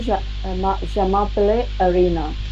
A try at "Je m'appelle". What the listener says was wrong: Not. It's not pelle. It's pel. Je m'appelle. Appel. So appel is one verb which means basically is one verb.